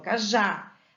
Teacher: Então, por exemplo, cajá, eu não falo caja, eu falo cajá. A sílaba tônica está no já, termina em A, leva acento.